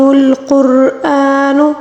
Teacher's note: قاف کو موٹا پڑھیں گے، را کو بھی پر پڑھیں گے، موٹا پڑھیں گے، کیونکہ را ساکن سے پہلے والے حرف پر پیش ہے، اس لیے اس کو پر پڑھا جائے گا۔